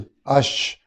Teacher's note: شین کو ادا کرتے ہوئے آواز پورے منہ میں پھیل جاتی ہے